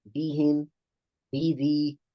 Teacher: Bad is a strong letter, has shidda, has jahr, it's a letter qalqala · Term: tarqiq